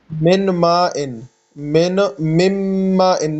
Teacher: نون بالکل ختم ہو جاتا ہے میم میں